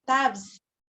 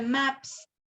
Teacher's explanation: La Z nos dice que es sonora en inglés y esta S es sorda.